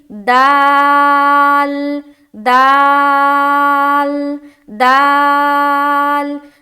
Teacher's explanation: زبان کی نوک سے یہ ادا ہوتا ہے اور ثنایا علیہ کی جڑ جب ملے تب ادا ہوتا ہے، ثنایا علیہ یعنی کہ اوپر کے جو 2 دانت ہیں سامنے کے وہ ثنایا علیہ کہلاتے ہیں، تو ان دونوں سے یہ دال ادا ہوتا ہے، یہ 2 مخرج دال کا ہے۔